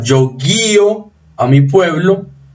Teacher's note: el acento salta a la cerrada, por lo tanto hay hiato, y es el tipo de hiato que se debe tildar.